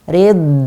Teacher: kita rokhawahkan karena dhad dia huruf rokhawah.